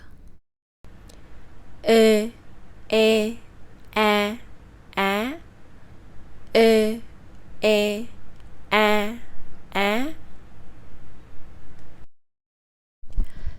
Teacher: Because they are all front vowels, your tongue is fixed at the front, so the only difference between these vowels is just how open the mouth is